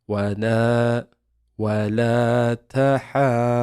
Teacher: Wa la ta ha, and we've got a mad, so we're gonna make this really long. However, there's a dad with a shadda after it. So we're going to grip onto the dad and then release.